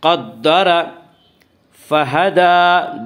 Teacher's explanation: دال کے اوپر کھڑا زبر ہے، کھڑا زبر کو ایک الف کے برابر کھینچ کر پڑھیں گے